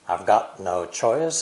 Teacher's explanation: the content words are got and choice at the same time i've and no are unstressed